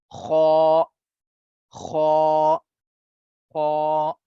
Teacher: makhraj of ghain and kha is that these two are pronounced from the upper part of the throat, from the upper part of the throat.